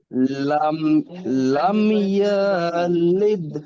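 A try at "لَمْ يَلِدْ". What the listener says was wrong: ইয়াতে টান আছে কি দেখেন তো ইয়াতে টান আছে একদম নয় লাম ইয়ালিদ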